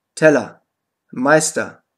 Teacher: Die unbetonte Endung ER wird A ausgesprochen.